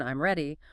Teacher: If you say it with a falling tone, I'm ready, it's a statement, >> but if you say it with a rising tone, I'm ready, it becomes a question